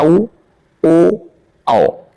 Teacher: वृत्त मुखी जिन स्वरों के उच्चारण करते समय ओठ गोलाकार हो जाता है। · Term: वृत्त मुखी स्वर